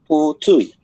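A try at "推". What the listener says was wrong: T-nya nggak ada H-nya. Bukan putui. Tui. T bersih. Ya, terus ini ada naik. Putui.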